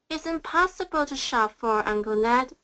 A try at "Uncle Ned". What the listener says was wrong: Good. Make that K stronger, Uncle.